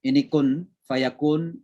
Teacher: Ini kun fayakun ini apa namanya ikhfa namanya ya. Jadi suara nun dimasukkan ke suara fa.